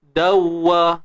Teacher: Idgham mutamathilain tak ada dengung, tuan-tuan dan puan.